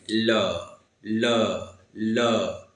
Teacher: जीवा तो तालु को छुएगी लेकिन हवा किधर से निकलेगा, बगल से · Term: पार्श्विक व्यंजन